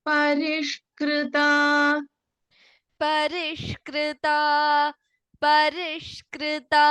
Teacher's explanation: in parish sha is the षण्मुख sha मूर्धन्य sha